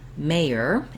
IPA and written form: ˈmeɪər (MAYOR)